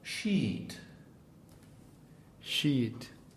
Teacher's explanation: Now it's E, the same as the Spanish E, as in piña colada, but it's double length